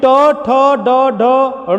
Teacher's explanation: ट ठ ड ढ ड़ के उच्चारण के दौरान जिह्वा जिस जगह को बार बार स्पर्श करे उसे हम मूर्धा कहते हैं